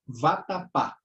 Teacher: oxítona é a palavra cuja sílaba tônica é a última tá então a última sílaba é mais forte · São 3 sílabas, o pá é a sílaba mais forte.